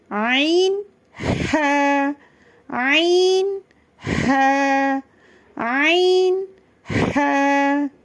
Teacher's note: அடித்தொண்டையிலிருந்து வெளிப்படும் ஹவை நீங்க சொல்லும்போது இப்படி காத்து உங்க கையில படக்கூடாது அப்படி பட்டுச்சுன்னா அந்த ஹம்ஸாவோட ஹவ வந்து நீங்க தவறா உச்சரிக்கிறீங்க அப்படின்றதை நீங்க